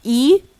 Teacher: We have E, which are front high long vowel.